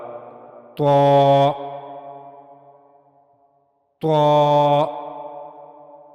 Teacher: زبان کی نوک کا اوپر والا حصہ جب اوپر کے اگلے 2 دانتوں کے پیچھے کے مسوڑے سے جا کر ملے گا تو وہاں سے طا ادا ہوگا۔ طا کی ادائیگی میں اس بات کا خیال رہے کہ طا اور تا یہ سننے میں دونوں ایک جیسے ہیں، لیکن ان میں فرق ہے۔